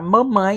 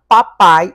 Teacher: a única diferença é que mamãe é um ditongo nasalizado e papai é um ditongo oralizado